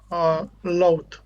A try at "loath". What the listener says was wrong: Just focus on when you pronounce that word on the TH sound. It's loath.